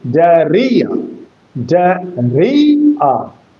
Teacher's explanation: And when it is a trisyllabic word, you will have to give stress or accent on re, diarrhea, diarrhea. So the accent is on the middle syllable. The accent is on the middle syllable, not diarrhea, but diarrhea.